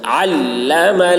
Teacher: عین کو حلق سے ادا کریں گے